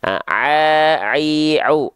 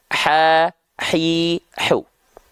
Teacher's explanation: ain dan ha kecil sama-sama dilafalkan dari bagian tengah tenggorokan